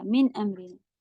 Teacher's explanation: من پہ قلقلہ نہیں دیجیے گا، من امرنا من نہیں ہوتا، من امرنا.